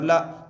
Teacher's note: ज़बर को जल्दी पढ़ें, थोड़ा भी ना खींचे, ज़बर की आवाज़ ऊपर को उठती है।